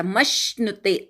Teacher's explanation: मश्नुते मधल्या मवर आघात घ्यायचा. म ला जोडून श म्हणायचा आहे आणि नुते म्हणायचा.